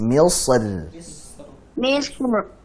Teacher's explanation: Sotnya tebal, r-nya tipis.